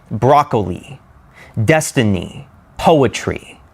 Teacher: Next we have dactyl. It sounds like dum-da-da, dum-da-da, broccoli, destiny, poetry, dum-da-da.